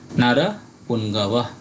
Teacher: এই ব টা মূলত হচ্ছে অন্তস্থ ব তাই ভি এর মত উচ্চারণ হবে